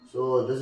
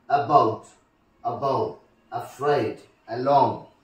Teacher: All these things have stress on the second syllable.